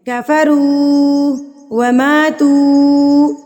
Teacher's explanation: یہ واو مدہ کہلاتا ہے. واو ساکن سے پہلے اگر پیش آ جائے تو واو مدہ کہلاتا ہے، اور اس کو ہم ایک حرکت کے برابر کھینچ کے یعنی کہ لمبا کر کے پڑھتے ہیں